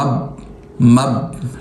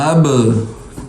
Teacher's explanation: دیکھیں میں پڑھ رہا ہوں نا، ایک تو اس کو پڑھنے کا طریقہ ہے کہ میں پڑھوں مب مب، لیکن قلقلہ کرنا ہے، ہمیں آواز کو چھوڑ دینا ہے